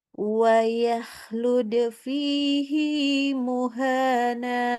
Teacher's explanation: Huruf sebelumnya sukun Huruf setelahnya hidup loh Kok h-nya dibaca panjang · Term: mad mubalagah